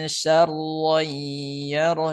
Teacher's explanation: Di sini ada huruf sya tipis, huruf ro tebal gitu ya.